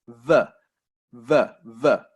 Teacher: if we're making the V sound, our lips don't touch. It's the teeth and the lips.